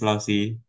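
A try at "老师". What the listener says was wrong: Jangan Lausi ya, bukan Lausi. Lause. Kan SHI. SHI bacanya SHE.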